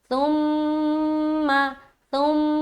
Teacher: मीम के ऊपर शद है तो मीम मुशद्द का गुना किया।